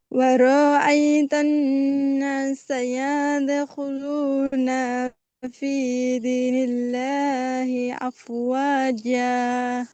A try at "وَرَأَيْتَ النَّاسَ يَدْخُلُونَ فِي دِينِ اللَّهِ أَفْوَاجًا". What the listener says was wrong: পড়া খেয়াল করে না, এলোমেলো হচ্ছে, টান টুন এলোমেলো হচ্ছে।